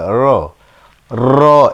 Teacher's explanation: জিহ্বার উল্টা পিঠ, তার বরাবর উপরে তালুর সাথে র বললে হবে র, র। এরকম করলে আবার বারবার উচ্চারণ হয়ে যায়, বলতে হবে হালকাভাবে লাগাবো র।